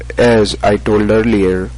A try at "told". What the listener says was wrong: And don't forget with the T, the told, as I was told earlier, you need to pronounce that T with more air.